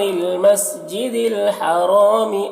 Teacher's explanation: مسجد الحرام را کو پر پڑھیں گے، الف مدہ ہے، ایک الف کے برابر کھینچیں گے